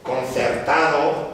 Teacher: ¿Qué ocurre? Pues que la N en este caso se interdentaliza